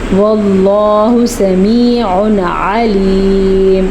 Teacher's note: جب کبھی نون ساکن کے بعد یا تنوین کے بعد حمزہ ہا، عین ح، غین خا، ان 6 حروف ہلکی میں سے کوئی سا بھی ایک حرف ہلکی آ جائے تو ہم نون ساکن کو یا تنوین کو ظاہر کر کے پڑھیں گے اور بغیر غنّے کے پڑھیں گے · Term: اظہار